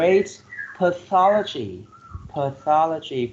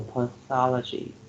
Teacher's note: four syllables and you put the stress on the second syllable